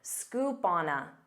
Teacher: instead of saying scoop on a with pauses you can pronounce this as one word